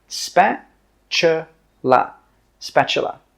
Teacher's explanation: The T sound is actually pronounced as a CH sound.